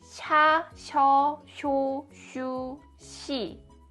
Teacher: if the vowel includes 'ㅣ' sound, This 'snowy mountain' sounds more like 'sh' rather than 's'.